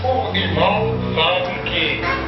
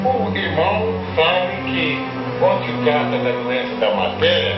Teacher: você vê retroflexão nos R's, o irmão. Um alemão nunca faria isso.